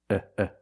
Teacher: And the vowel is short and relaxed.